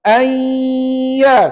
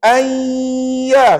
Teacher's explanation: Nun tak bunyi dah tuan-tuan. Sebab apa? Dah masuk dalam huruf ya. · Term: idgham